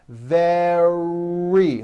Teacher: d sound the word is not vedi or very it's very make sure that the r sound is strong and your lips are coming forward your tongue is back and you push out the r